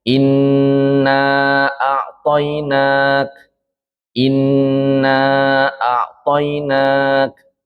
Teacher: Jadi ada ghunahnya dua ketukan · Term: gunnah